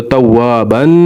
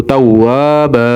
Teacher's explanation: تو حروف مدہ کو 1 سیکنڈ تک لمبا کرتے ہیں، تو اس لیے اس کو با پڑھیں گے، تواب. اگر وقف نہیں کریں گے تو توابن، اور اگر وقف کریں گے تو تواب